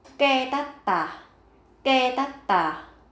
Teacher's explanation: Đối với từ ketatta, bạn cần chú ý gấp đôi phụ âm tờ lên.